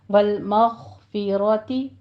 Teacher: گے، اکمل غنہ ہوگا یہاں پہ 2 کاؤنٹ کرنا ہے، والمغفراتی غین کو پر پڑھیں گے ادنا حلق سے اور را مفخم پڑھی جائے گی